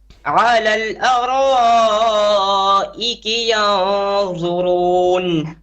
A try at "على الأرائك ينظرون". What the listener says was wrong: No, too much hams on that noon.